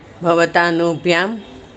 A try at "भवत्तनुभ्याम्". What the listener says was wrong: कहाँ से आ गया? तनु शब्द है।